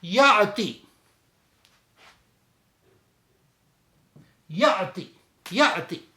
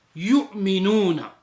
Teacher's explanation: جس حمزہ کے اوپر سکون آئے گا جب اس کی ادائیگی کریں گے تو اس میں ہم تھوڑا سا ایک جرک لگائیں گے، اگر جرک نہیں لگائیں گے تو ادائیگی صحیح نہیں ہوگی۔ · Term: حمزہ ساکنہ